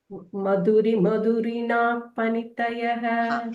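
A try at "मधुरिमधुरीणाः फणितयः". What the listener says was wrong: மதுரிம துரீனா சொல்லிக்கோங்க. மதுரிம அந்த ரீ ஷார்ட், துரீனால வர ரீ long. So ensure you டூ. அப்பதான் அந்த சந்தஸ் கரெக்டா இருக்கும். இல்லைன்னா ஒரு அக்ஷரம் ஷார்ட்டா இருக்கும்.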